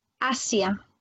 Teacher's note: Le son ZE n'existe pas en espagnol, jamais.